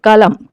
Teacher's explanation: Next కలం. కలంలో మనం ఎలాంటి జట్కా పదాలు అనేవి చూస్తలేము కాబట్టి కలం అనేది ఒక అల్ప ప్రాణాక్షరం